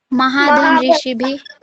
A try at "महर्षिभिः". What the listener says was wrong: महाधन महाधन यहाँ पर विसर्ग लगेगा। ठीक है, भ के बाद में विसर्ग लगाना है। महाधन ऋषि भी, ये समझ में आ गया?